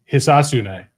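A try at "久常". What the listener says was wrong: There's a little more of an emphasis on the A there in the middle. Hisatsune.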